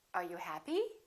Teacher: with yes no questions the intonation goes up